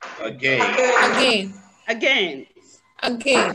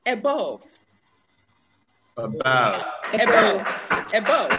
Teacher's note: We have this schwa at the beginning of again. We have it at the beginning of above. And we have it at the end of mother.